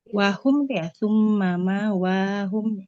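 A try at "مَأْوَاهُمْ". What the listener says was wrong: Ma wahum. Hamzah sukun ya, Bu, di depan. Ma. Wahum.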